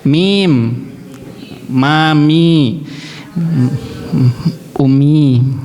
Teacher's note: Mim itu keluarnya dari bibir dari bibir dua safatain. · Tidak mungkin bisa bilang mim kecuali bibirnya. Mingkem.